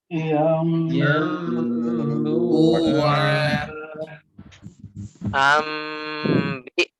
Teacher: Karena merubah bunyi nun mati atau tanwin ketika bertemu dengan ba berubah menjadi mim kan. Nah, sedangkan mim itu tidak akan pernah bisa terwujud mengucapkan mim kalau bibir kita enggak menempel atas dan bawah. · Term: iklab